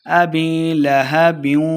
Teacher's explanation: ہا کو حلق نچلے والے حصے سے پڑھنا ہے